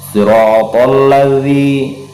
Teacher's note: Siratal ladzi, mahruf zi ini ada di ujung lidah, arah punggungnya, jadi menempel, punggung lidah kita ini menempel pada ujung 2 gigi seri kita di depan, gigi seri yang ini di depan.